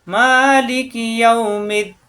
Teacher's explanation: লাস্টের হরফে সাকিন হয়ে যাবে, দি 1 আলিফ টান 3 আলিফ টান হয়ে যাবে মাদে আরদি। অর্থাৎ মাদের হরফ আমাদেরকে মুখস্থ থাকতে হবে।